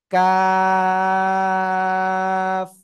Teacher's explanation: চার লিপ টেনে পড়তে হবে। জিহ্বার গোড়া থেকে একটু বাড়াবো, বাড়িয়ে তারপর আবার উপরে তালুর সঙ্গে লাগাবো, লাগিয়ে চিকন আওয়াজে চার আলিফটা নিয়ে পড়বো